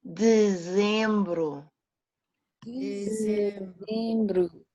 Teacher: dezembro has a EM. This EM has the same nasal sounds that are referred to as in the one with a tilt, like cão. Dezem, nasal, bru.